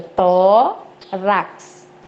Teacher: Também, ó, quando eu faço a divisão silábica, fica tórax, né? Então, o acento forte aqui, ó, o tônico, é o tó. Ela leva um acento porque é terminada em X, ok?